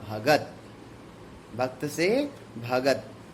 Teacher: तो अघोष का घोषीकरण, पहली ध्वनि तीसरी में बदल जाए।